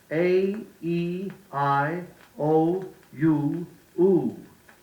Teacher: Make each distinct. You started with the wide open A and ended with the pouting half-closed oo. The I was more closed than the E, the O more closed than the I, the U more closed than the O, the oo the most closed of all.